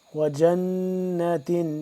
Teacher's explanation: نون یہاں پہ مشدد ہے، اس پہ ہم کیا کریں گے؟ غنہ کریں گے